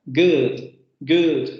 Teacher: Good, por ejemplo, que es la palabra que vamos a ver, ¿no? Central posterior, media cerrada, labializada. Good, good, porque cuando se pronuncia la palabra good, se van a dar cuenta que se labializa esta vocal, ¿vale?